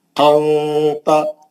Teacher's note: اخفا میں نون کی آواز کو چھپا کے غنے سے پڑھنا ہے، یعنی نون کے مخرج کو زبان کی نوک لگنے نہیں دینا، نون نہیں نکلنا، کلیئر نون نہیں نکلنا، منہ کھول کے زبان کو نیچے پکڑ لینا، نہیں تو اوپر جا کے مسروڑی کو ٹچ ہوئی تو نون نکل جاتا، نہیں نکلنے دینا۔